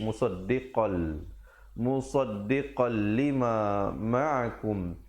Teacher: di situ idgham bila gunnah, masuk tanpa dengung. Asalnya musaddiqan, tapi bila datang lam jadi musaddiqal.